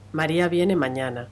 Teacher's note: lo que encontramos es que el tono es más alto que en una declarativa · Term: interrogativa absoluta